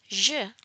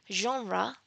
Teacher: But in the case of its counterpart the sound zh as in the first sound in the word genre there is vibration of the vocal chords. This is why this sound is called the voiced post-alveolar fricative